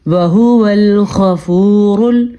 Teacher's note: اور غین جو ہے وہ پر پڑھا جائے گا کیونکہ حروف مستعلیہ میں سے ہے, اور را پر پڑھا جائے گا کیونکہ را پیش کی صورت میں ہے